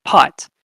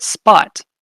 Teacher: So if you put your hand in front of your mouth and you say pot, a native English speaker has a puff of air coming out. But in the word spot, there is no puff of air.